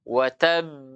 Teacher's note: huruf ba itu makhrajnya dengan merapatkan kedua bibir saja.